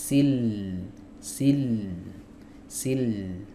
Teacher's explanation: Ya, tadi udah kita bahas makhrajnya ada di tepi lidah. Di tepi lidah bagian depan sampai ke muntahal hafah, kemudian ke tepi berikutnya. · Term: huruf lam